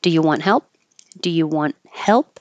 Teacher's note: you're not going to hear the T on want and you're not going to hear the p on help but your tongue does have to go to that position · you can also change you to ya to make it faster and more casual.